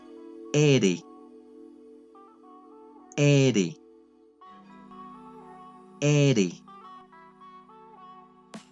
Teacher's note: se articula al tocar con la lengua la región alveolar superior, es decir, aquella zona en tu paladar donde reposan las raíces de los dientes, especialmente hacia adelante.